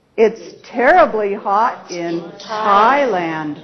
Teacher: stressed syllable Tha and the focus word is Thailand right but the stress syllable or Peak syllable is Tai and that's where we have the rise in intonation occurring